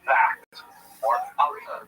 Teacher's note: Again, don't try this at home without speaking to your local Orthodox rabbi, but it's possible that the Dalet can be pronounced as a voiced dental fricative, such that it doesn't sound like a d, but as a th